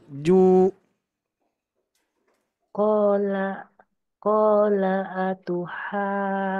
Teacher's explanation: Ju agak sedikit panjang lagi. Ju 2 harokat.